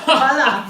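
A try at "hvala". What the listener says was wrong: With H though. It's like a silent H. soft H.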